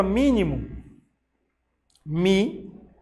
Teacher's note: A palavra mínimo, mi, é o mais forte, correto. Acentua-se mi, porque ela é uma proparoxítona.